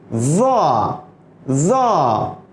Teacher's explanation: the tip of the tongue یعنی زبان کی نوک touches the edge of the top front 2 teeth، سامنے کے 2 دانت، اوپر کے دو دانت کے کنارے سے لگ کر کے وا، منہ کو گول کر کے یہ حرف ادا کیا جاتا ہے.